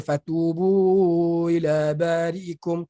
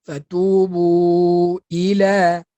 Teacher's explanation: Kena sebut betul-betul i tu. Sebab dia mudah hilang pada sebutan.